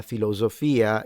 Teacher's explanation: They do have typical northern things, like the s in intervocalic position. So, there is the s, and it's in between vowels, it's always a z. That's a characteristic of very very northern sounding accents.